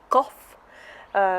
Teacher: the K sound in the back of the throat